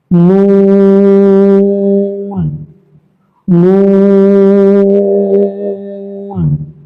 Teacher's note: নুন হরফটা জিহ্বার আগা তার বরাবর উপরে তালুর সাথে লাগিয়ে উচ্চারিত হয় এবং এটা 3 থেকে 4 প্রাণ দিয়ে পড়বেন।